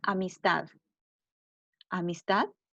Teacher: la sílaba tónica está al final de la palabra